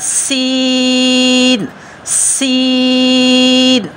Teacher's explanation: دانتوں میں تھوڑا سا وقفہ بھی ہے، تو ہم پڑھ رہے ہیں سین، سیٹی کی آواز سے۔ یہ حروف صفیریہ ہیں تو ان میں سیٹی کی آواز بھی آئے گی